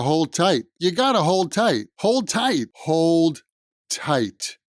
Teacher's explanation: when a word ends with a D and the next word begins with a T, that the D sound kind of disappears